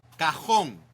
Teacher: The J in Spanish sounds like the English H in house, but stronger from the back of your throat.